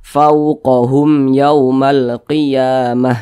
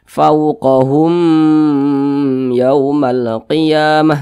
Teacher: dibaca jelas tidak berdengung jadi dibaca pendek saja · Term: izhar syafawi